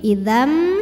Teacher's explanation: sukun dibaca dengan jelas innakum Idam kemudian ada hukum idgham bighunah karena ada tanwin fathah menghadapi huruf mim maka tanwinnya masuk ke mim Idam dan tahan bunyi m-nya dengungkan amluhum di atasnya